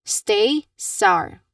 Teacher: There's no vibrations at all when you try to say or pronounce the letter s sound like in the word stay or sour. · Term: hissing sound